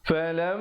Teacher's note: di situ mim sabdu dengungkan dua harakat